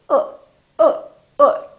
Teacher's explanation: for the neutral sound the lips are very slightly rounded